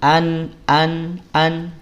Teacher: ada Nun nun sukun barulah dia dengung tapi jangan terlalu lama